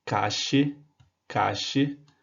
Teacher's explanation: Um som chiado, bastante presente na Argentina ou no Uruguai, que fica cache, cache.